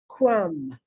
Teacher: notice i'm not pronouncing the b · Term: silent b